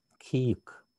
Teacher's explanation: Да, вот здесь звук, смотрите, к и как бы на кх имеется в виду к на выдохе.